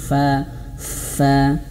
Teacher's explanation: huruf fa ini makhrajnya bibir bawah, perut bibir bawah ini menyentuh ujung gigi seri atas.